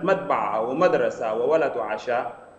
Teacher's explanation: مصر أو جنوب مصر مثلا في كلمة مدبعة ومدرسة وولد وعشاء فنجد أن النبر يكون دوما في المقطع الأول